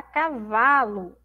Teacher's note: todas essas palavrinhas terminam com o mas tem som de u